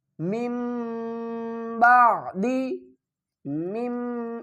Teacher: اقلاب کریں گے، نون کی آواز کو میم کی آواز میں بدل کر پڑھیں گے